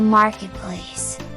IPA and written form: ˋmɑrkɪt͵ples (marketplace)